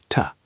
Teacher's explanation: We make them tiny. We turn the vowel sound into a very short, weak sound called the schwa.